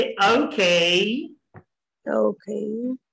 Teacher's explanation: ओके, वो इसलिए ओके कहते हैं क्योंकि ओ को औ बोलते हैं और के को खे